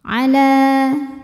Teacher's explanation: Alif didahului harakat fathah maka panjang dua harakat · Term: Mad thi'i